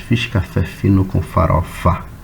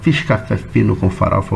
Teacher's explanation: São os sons das consoantes dentolabiais, né? A gente costuma dizer que é a letra F e letra V, né?